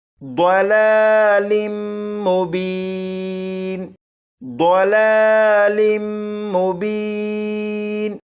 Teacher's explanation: ضاد ہے اسے پر یعنی موٹا پڑھیں گے، اور یہاں پر میم مشدد پر غنہ کریں گے۔